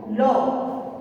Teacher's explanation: লকে পার্শ্বিক ধ্বনি বলা হয় এবং জিভের সামনের অংশকে মুখের মাঝামাঝি দন্তমূলে ঠেকিয়ে জিভের দুপাশ দিয়ে বাতাস বেরিয়ে এসে ল উচ্চারিত হয়